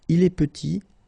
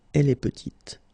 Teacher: Final T is not pronounced, and then when you add this E at the end, you get the sound T